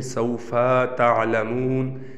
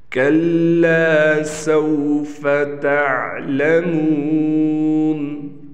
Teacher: یہاں پر بعض لوگ سوفا کے فا کو کھینچ دیتے ہیں، سوفا تعلمون ایسے پڑھتے ہیں جس سے مجہول ہو جاتا ہے، تو اس چیز کا ہم نے خیال کرنا ہے.